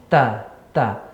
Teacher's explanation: Di mana ta ya tarful lisan ya bertemu dengan pangkal gigi seri, ujung lidah bertemu dengan pangkal gigi seri atas